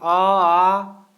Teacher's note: हवा अगर निकल जाए, कोई भी वर्ण का आप उच्चारण कर रहे हैं तो जैसे कि आ है ना, जब पढ़ेंगे तो उसमें आपका हवा निकलेगा, बिना सटे बिना रुकावट के हवा निकल जाता है, उसको हम बोलते हैं स्वर।